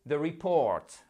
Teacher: The report, accent tonique sur la seconde syllabe.